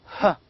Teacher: that sound is called as glottal fricative voiceless sound